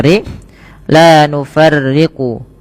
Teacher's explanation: yang rnya itu dibaca dengan tipis